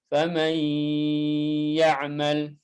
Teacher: Oke, karena sifat gunnah yang ada dalam nun atau nun mati, kan yang namanya idgham itu nun mati itu berarti dimasukkan ke huruf setelahnya. Oke, huruf nunnya masuk, tapi sifat gunnahnya tertinggal. Sifat gunnahnya masih ada. Berarti idghamnya naqis, idghamnya tidak sempurna. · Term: idgham bi gunnah